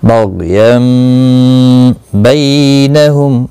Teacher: बग़यन बैनहुम, यम यानी तनवीन की आवाज़ मीम में बदल जाएगी। बग़यन बैनहुम, बै या लीन है, थोड़ा नरमी के साथ खींच कर अदा करेंगे। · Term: इक़लाब